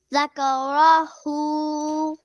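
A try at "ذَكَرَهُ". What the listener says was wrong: Yeah, ha should be more softer, gentler, deeper from the chest. Zakaroh, like that.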